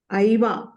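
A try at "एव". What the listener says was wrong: మీరు సరిగ్గా అంటల్లా. ఐవానా ఏవా. ఐవా అన్న పదం లేదు సంస్కృతంలో నాకు తెలిసి. సో అది ఏవా అవ్వాలి.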